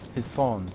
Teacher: That saw sound in Hisan is a bit deeper and more emphatic.